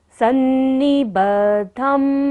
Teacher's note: द के नीचे देखिए ध है और द के ऊपर बिंदु जो है, यहाँ पर हम बिंदु का उच्चारण म करेंगे क्योंकि ये फर्स्ट लाइन का हमारा लास्ट अक्षर है